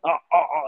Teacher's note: उसमें प्रेशर लगता है गले में गले को तंग करना पड़ता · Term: आइन